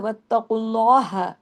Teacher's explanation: हा को बारीक काफ को हैवी · اور اگر ملائیں گے تو واتقوا اللہ، ہاں کو باریک، قاف کو ہیوی